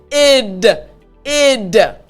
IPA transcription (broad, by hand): id